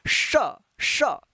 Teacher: जीभ जो होता है तालु में ऊपर जाकर चढ़ता है, तब इसका जो है साउंड निकलता है श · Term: तालव्य श